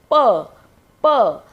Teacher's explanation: तो आप देख रहे हैं हमारे होठ आपस में जुड़ रहे हैं।